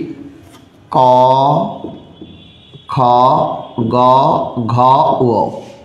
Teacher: ক বর্গের ধ্বনিগুলো সব কণ্ঠ থেকে উচ্চারিত হয় বলে এর নাম হলো কণ্ঠধ্বনি।